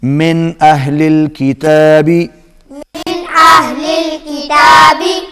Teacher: نون ساکن اور تنوین کے بعد جب بھی حروف حلقی میں سے کوئی حرف آئے گا تو وہاں پر اظہار ہوتا ہے، وہاں پر آواز ناک میں نہیں جائے گی۔